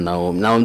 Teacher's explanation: naum itu memang madlin ya itu boleh panjangnya sekitar 3 sampai 5 harkat